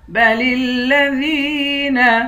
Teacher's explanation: لام کو لام کے ساتھ ملا کر لام کو سختی کے ساتھ جمع کر پڑھیں گے، دال کو یا کے ساتھ ملا کر یا کو ایک الف کی مقدار کھینچیں گے۔